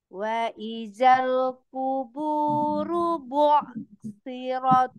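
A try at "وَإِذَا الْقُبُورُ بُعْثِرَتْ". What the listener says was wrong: Runya pendek kita, jangan kuburu, jangan terayun runya. Wa izal kuburu bu'thirat.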